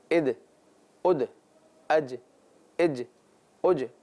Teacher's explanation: ہلکا سا ایک آواز میں لوٹ رہی ہے آواز، اسے ہی قلقلہ کہتے ہیں